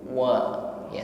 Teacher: sempurnakan pengucapannya dengan menghimpun bibir wa, ya, sehingga suara atau bunyi dari waw ini tipis